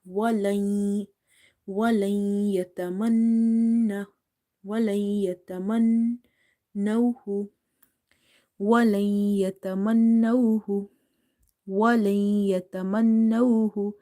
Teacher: Ya is from the Yarmalun letters. So here you will do idgham meaning merging as well as nasalization meaning gunna.